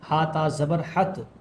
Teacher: تا کے اوپر تشدید ہے اس لیے ہا کو تا میں ملا رہے ہیں ، ہا تا زبر حت، تا کے اوپر کھڑا زبر ہے،